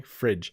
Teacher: when we say fridge you can hear a little bit of a d in there so maybe somewhere along the way someone added it that could